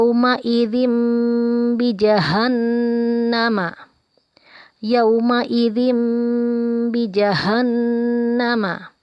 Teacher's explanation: Ada tanwin bertemu huruf ba, maka berubah bunyinya menjadi huruf mim dan kita panjangkan. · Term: iqlab